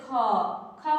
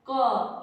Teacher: ख बोलते हैं तो ज्यादा समय लगता है, क ये जल्दी उच्चारित हो जाता है। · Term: महाप्राण